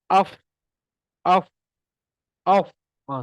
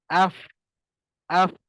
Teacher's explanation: Gigi kena ke atas, gigi atas pula. Gigi atas ke bibir bawah.